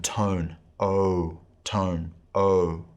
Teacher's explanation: in the erasmus pronunciation this is a long o sound as in tone